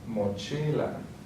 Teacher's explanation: the stress is going to be on the second to last